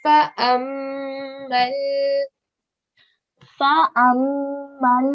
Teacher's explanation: So we're going to elongate the fala for 2 seconds.